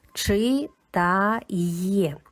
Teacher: Після голосної є ми також чуємо як два звуки й е. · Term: йотована